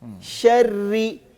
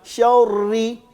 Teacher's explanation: جب را مشدد آ رہا ہے, اس کے نیچے زیر آ رہا ہے, اس کو پڑھنا تو باریک ہے, لیکن پہلے تھوڑا سا موٹا پڑھ کے پھر باریک پڑھتے ہیں. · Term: را کو باریک